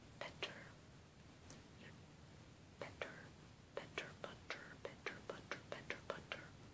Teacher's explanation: with the D's and the t's they technically still stops but my tongue Taps against the back of my teeth